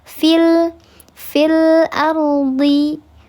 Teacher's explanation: di sini ar dibacanya tafkhim, tebal karena ro-nya ro tafkhim